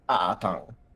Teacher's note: It has a glottal stop right at the beginning, which makes it a little bit harder to say because glottal stops are hard.